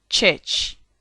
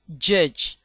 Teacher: Ch. Voiceless palato alveolar affricate. Church. J. Voiced palato alveolar affricates. Judge.